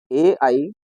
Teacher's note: ए ऐ कंठ तालव्यौ ए ऐ अनयोः वर्णयोः उच्चारणम उभयो वर्ण तालु स्थानयो भवति। ए ऐ, इन दोनों वर्णों का उच्चारण उभयो, दोनों से अर्थात कंठ तालु स्थानयो, कंठ और तालु स्थान में भवति होता है।